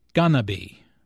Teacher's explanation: Instead of 4 syllables go/ing/to/be there are 3 syllables ga/na/be.